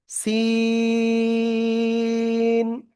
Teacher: জিহ্বার আগার সামনে নিচে দুই দাঁতের পেট ও আগার সাথে লাগিয়ে এই অক্ষরটা আপনার উচ্চারণ করতে হবে।